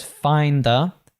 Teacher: he drops the D on find